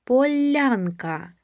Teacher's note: Приголосний ль вимовляємо м'яко перед буквою я.